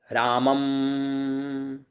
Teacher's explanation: और अनुस्वार का उच्चारण कहां से होता है, नासिका से, नाक से वायु निकालते हुए इसका उच्चारण होता है।